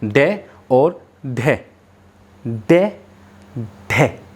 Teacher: जब भी हम इनका उत्क्षिप्त व्यंजन या द्विगुण व्यंजन को बोलते हैं तो हमारी जो जीभ है वो मूर्धन्य से टकराती है और एकदम से नीचे आ जाती है।